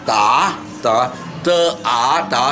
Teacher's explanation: there's no aspiration, no sound, no air coming out.